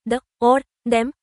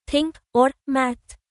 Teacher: the th sound can be voiced, like in the, or, them, or unvoiced, like in think, or math.